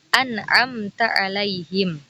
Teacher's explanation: mim sukunnya tampak jelas dan tanpa gunnah. Contoh izhar syafawi yakni an'amta alaihim.